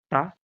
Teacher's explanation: टा का उच्चारण मूर्धा से होता है,